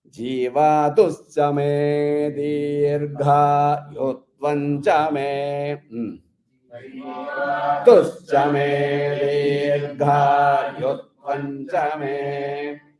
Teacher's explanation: Di or gha should never come down. Both di and ga.